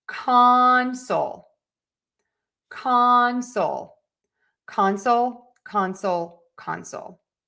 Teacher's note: let's do the noun stress syllable number one